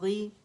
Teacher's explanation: زیر کے ساتھ موٹائی تھوڑی سی کم ہو جاتی ہے